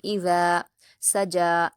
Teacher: جلد پڑھیں گے، واللیل اذا، حمزہ پر حرکت جلد پڑھیں گے، ذال پر الف مدہ ہے 2 حرکات کھینچیں گے اور ذال کے مخرج کو نرمی سے ادا کریں گے